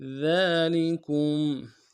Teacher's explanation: ذال کے اوپر کھڑا زبر ہے، 1 مقدار میں کھینچیں گے، کاف کو مساکن کے ساتھ ملانا ہے، غنہ کریں گے۔